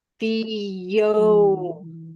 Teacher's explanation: before we move from Fe to O we're going to connect using this Y sound